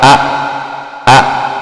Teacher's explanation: makhraj huruf daripada hamzah adalah tenggorokan bagian bawah. Ini jakum nih ya.